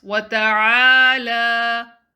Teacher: Prolong the lam to 2 counts.